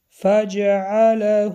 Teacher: حرف میم با سکون اظهار شفوی روشن خوانده می شود.